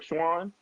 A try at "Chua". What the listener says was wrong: Chua. Chua, like it's a ch, so it's a chua like China, but chua instead of China.